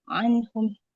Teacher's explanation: Huruf ainnya di tengah tenggorokan.